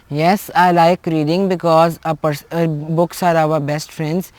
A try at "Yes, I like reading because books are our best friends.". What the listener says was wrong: Okay, your answer is very good, but your intonation is... You should talk loudly, okay? Try to talk loudly. It's not that, in Urdu we use the word rondu. Rondu. You should talk happily, cheerfully and all that, okay?